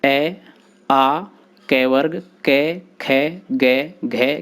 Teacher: कंठ से बोले जाने वाले इन वर्णों को कंठ कहा जाता है। इन वर्णों के उच्चारण में जिह्वा कंठ का स्पर्श करती है।